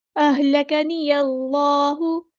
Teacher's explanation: हमज़तुल वस्ल हमारा ड्रॉप हो जाएगा। अल्लाह का जो लाम है यहाँ पे हेवी अदा होगा, इसमें जो डाला तफ़ख़ीम हो रहा है।